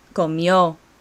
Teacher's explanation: do you hear the accent on the end